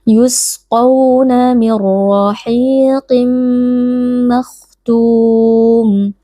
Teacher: Cara membacanya, nun sukun kita idghamkan atau kita masukkan ke dalam huruf ra sehingga huruf ra menjadi huruf bertasydid, lalu dibaca tanpa berdengung. Dan ra di sini karena berharakat fathah, kita baca tebal dengan mengangkat pangkal lidah · RO di sini karena berharakat fathah kita baca tebal dengan mengangkat pangkal lidah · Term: idgham bila gunnah